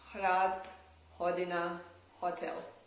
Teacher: the H sound in German and Czech and English is the voiceless glottal fricative. So the air goes out of the mouth and there is almost no obstruction.